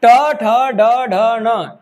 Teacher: ट ठ ड ढ न, टवर्ग, तो मूर्धा से आता है